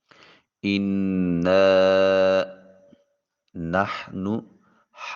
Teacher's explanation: ہا کو وسط حلق سے نکالیں گے